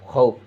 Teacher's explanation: اس میں بھی واولین ہے، واولین کو نرمی سے جلد ادا کرے۔